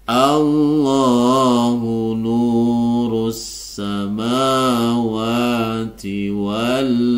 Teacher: di sini lafaz Allah berada tepat di awal kalimah maka lafaz Allah ini dibaca tebal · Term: lafzul jalalah tafhim